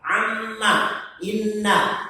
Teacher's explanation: Syaddadah artinya yang bertasydid atau yang dikuatkan. Dibaca mim dan nun al-musyaddadah itu dibacanya gunnah.